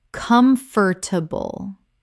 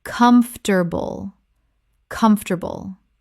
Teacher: This is only three syllables in natural speech, not four.